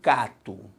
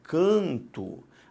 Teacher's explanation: na verdade o som é diferente por uma nasalização e não pela entrada de um novo fonema · o que aconteceu foi simplesmente a nasalização da vogal A.